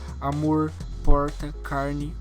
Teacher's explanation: O R maiúsculo tem o som caipira, um som mais também americano. Tem o som de em palavras como em inglês, por exemplo, como right, como real.